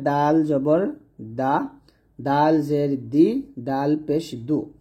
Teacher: হবে জিহ্বার গোড়ার কিনারা উপরে মারি দাঁতের গোড়ার সঙ্গে লাগবে তো এখানে দালটা হবে পাতলা করে